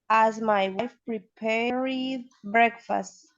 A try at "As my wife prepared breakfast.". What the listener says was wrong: That's the one. Excellent. Very good pronunciation.